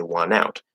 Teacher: the T will disappear and the N will connect instead